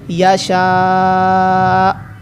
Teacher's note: کیونکہ یہاں پر حمزہ ساکن ہے، پہلے لمبا کریں گے مد کی وجہ سے، پھر آخر پر حمزہ ساکن کا جھٹکا دیں گے